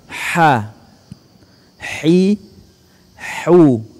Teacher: Huruf ha keluar dari tengah tenggorokan dengan suara yang bersih.